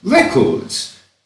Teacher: notice record with the stress on the first syllable because it's a noun